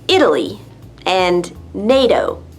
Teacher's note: The T is pronounced D when it's between two vowel sounds, like with Italy and NATO. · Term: flap T sound